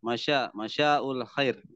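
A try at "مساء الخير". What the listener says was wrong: oh itu masa bukan shin tapi sa. Ya, bukan masya tapi masa ul khair.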